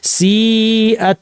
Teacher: তারপরে সি আত, সি এটা মাদ্দের ইয়া ছিল, এরপরে হামজা আসছে একই শব্দে, সি আত মাদ মুত্তাসিল 2 আলিফ। মুসা বলতে যতক্ষণ লাগে।